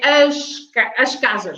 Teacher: So the S at the end is pronounced as sh.